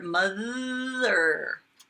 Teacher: Mother is a buzzer. A voiced one. Tickles your tongue.